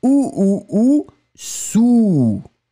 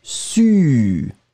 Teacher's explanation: le A, très rond, ou, sou. D'accord ? Le deuxième, beaucoup plus étroit, su.